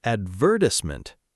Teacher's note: in British English, the stress moves to the second syllable